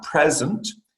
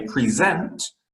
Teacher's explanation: you're stressing the second syllable and it is a gift whereas if you say present you're stressing the first syllable